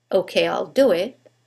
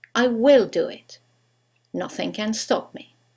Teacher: When we use the contraction, there is no stress on the contracted form